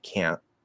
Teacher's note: you can stop the t say can't